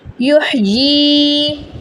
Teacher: ہا کی آواز حلق کے درمیان سے نکلے گی